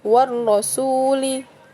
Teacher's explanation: Jadi alif lam bertemu dengan salah satu huruf syamsiyah yaitu huruf ro ya, dan alif lamnya tidak dibaca langsung ke huruf ro yang bertasydid. Jadi dibacanya war rasuli itu. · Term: alif lam syamsiyah